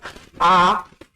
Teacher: हरस की तुलना में लगभग दो गुना समय लगे उसको कहते हैं दीर्घ स्वर